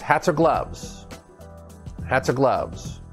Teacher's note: it's a consonant connected to a vowel and we tie everything together that's linking